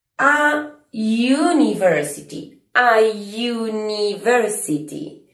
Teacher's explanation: University no empieza con sonido U. empieza con sonido you, consonántico. Entonces no voy a usar an, a pesar de que empieza con la letra u.